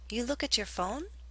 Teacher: speakers sometimes ask questions for confirmation simply by using rising intonation with a statement